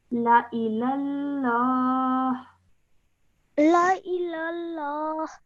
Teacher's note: Remember not to elongate the la because it simply has a fatha